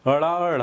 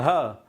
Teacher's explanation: उच्छिप्त तो मूर्धा से इसका उच्चारण और इसका भी उच्चारण मूर्धा से, लेकिन ड़ सघोष अल्प प्राण है और ढ सघोष महाप्राण है